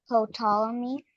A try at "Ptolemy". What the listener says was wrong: Nope. When you see P and T like that, it's just pronounced with the second letter only. The P is silent. So that would be Ptolemy, okay?